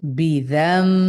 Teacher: তাহলে যখন আমরা এটাকে পড়বো বি দ্যাম, এখানে সরাসরি মিমের উপরে গুণনা করব। এখানে কিন্তু নুন সাকিনটা উচ্চারণে একদমই আসবে না, সরাসরি আমরা মিমকে ধরে গুণনা করছি। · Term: গুন্না